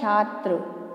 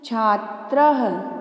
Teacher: पहला शब्द है छात्र, जो त्र है उसके पश्चात बच्चों दो डॉट्स दिखाई दे रहे हैं, इन डॉट्स को संस्कृत में विसर्ग कहते हैं और इसका उच्चारण ह से किया जाता है